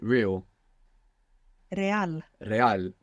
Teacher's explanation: when we have an r at the beginning you might hear it like rolling